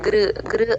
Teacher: ఇకారానికి ఉకారానికి మధ్యలో గృ చెప్పాలి గృ గృ అన్నట్టుగా చెప్పాలి హ కింద ఇందాక మా వత్తు చెప్పుకున్నట్టే ఇప్పుడు